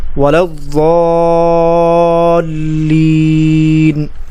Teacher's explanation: لام پر تشدید ہے تو اس کو سختی اور جماؤ کے ساتھ پڑھیں گے ذرا رک کر